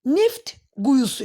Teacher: F X T S t şiti ilə bitən sözlər. Bunlarda samitlə başlayan şəkilçi və ya söz gəldikdə t hərfi tələffüz olunmur.